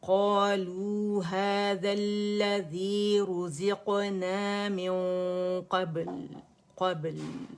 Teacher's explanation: क़ब बा बारीक है, क़ब्ल, और लाम भी बारीक है